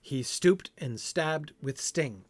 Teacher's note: It's like as if the line is iambic, but instead of unstressed and stressed syllables, it's unalliterated and alliterated syllables